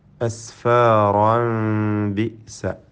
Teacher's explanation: അസ്ഫാറ ഇവിടെ വഖഫ് ചെയ്യാതെ ചേർത്തോതുകയാണെങ്കിൽ അസ്ഫാറൻ ബിസ തൻവീനിനെ ഇഖ്ലാബ് ചെയ്ത് സാക്കിന മീമിൻ്റെ ശബ്ദം നൽകി മാറ്റി മണിച്ചുകൊണ്ട് ഉച്ചരിക്കണം. ഫലത്തിൽ സാക്കിന മീം ബായിന് മുമ്പിൽ വരുമ്പോൾ നൽകേണ്ടതായ ഇഖ്ഫ ഷഫവി എന്ന നിയമമനുസരിച്ച് അവ്യക്തമാക്കി മണിക്കേണ്ടതാണ്